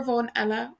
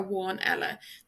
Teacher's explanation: This MH is pronounced like a V in Munster, but a W in Ulster and Connacht.